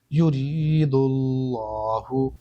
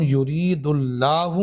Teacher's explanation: اسی طرح سے یہاں بھی لفظ اللہ ہے، اور لفظ اللہ کے اس والے لام سے پہلے دال کے اوپر پیش ہے، اور پیش آنے پر بھی موٹا پڑھتے ہیں تو یہاں پر لام کو موٹا پڑھیں گے